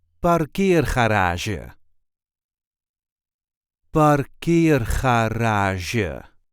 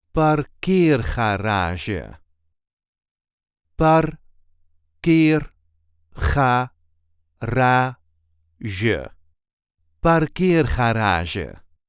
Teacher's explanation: There is a light emphasis on the second syllable.